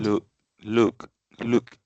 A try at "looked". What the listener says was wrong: Okay, I want you to exaggerate a little bit more the T sound. Looked. Es como un pequeño estornudo al final. O sea, yo sé que estoy exagerando mucho. Yo sé que la gente, pues en la vida real no anda diciendo looked.